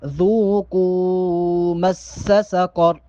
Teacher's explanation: قوف جو ہے حروف مستعلیہ میں سے یعنی کہ موٹے حروف میں سے ہے، لہٰذا یہاں پر قوف کو موٹا پڑھیں گے۔